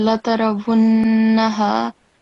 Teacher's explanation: make sure that it's the nasal sound, it's for at least 2 seconds counts or beats